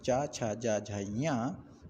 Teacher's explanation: इन सब का जो उच्चारण स्थान है वो तालू है